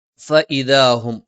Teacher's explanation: ഹ തൊണ്ടയുടെ താഴ്ഭാഗം നാവിന്റെ തലയുടെ മുതുക് മേലെ മുൻപല്ലിന്റെ മോണയിൽ സ്പർശിച്ചുകൊണ്ടാണ് ഫഇദാഹും ഫ മേലെ മുൻപല്ലിന്റെ താഴ്ഭാഗം താഴെ ചുണ്ടിന്റെ പള്ളയിൽ അ തൊണ്ടയുടെ താഴ്ഭാഗം നാവിന്റെ അറ്റം മേലെ മുൻപല്ലിന്റെ നാവിന്റെ അറ്റം മേലെ മുൻപല്ലിന്റെ